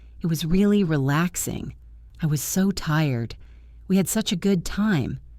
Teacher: Putting stress on words like really and so and such adds emotion to your English.